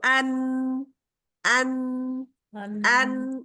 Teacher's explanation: 6 दांत। 6 दांतों के हमारे मसूड़ों से जाके, यानी जड़ से उनके लगेगी जुबान की नोक, जब हमारे 6 दांतों के मसूड़ों से लगेगी तो अन, अन, अन। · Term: नून